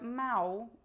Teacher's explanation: the l is pronounced exactly like the o